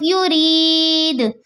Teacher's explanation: دال کا پیش حذف ہو جائے گا، دال ساکین ہو جائے گا ، وف بنے گا وف بالاسکان، یا ساکین ہے، اس سے